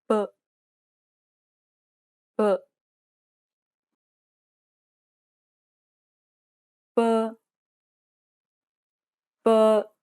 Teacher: It sounds like the P in the word span. There should not be a burst of air when you pronounce this sound.